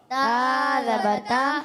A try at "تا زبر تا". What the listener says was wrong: حرف کو تھوڑا کھینچنا ہے آپ نے. اچھا زبر پڑھیں گے, زبر نہیں, زبر زال سے نہیں, زا سے, زا, جہاز والا زا.